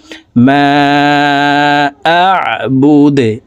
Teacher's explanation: করে ফেলবো তো এখানে এভাবে থামবো দেখুন দাল যেহেতু কলকলার হরফ নিচের দিকে ধাবিত করে ধাক্কা দিয়ে দালকে সাকিন করতে হবে